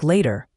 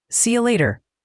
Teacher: In American English, the t often becomes that soft d sound like later.